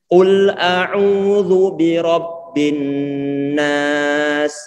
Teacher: Ini dhammah. Kita monyongkan. Kemudian lam dia sukun, maka sudah kita tarik ke belakang.